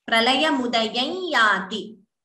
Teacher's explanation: instead of anuswara completely, the ya takes a nasal tone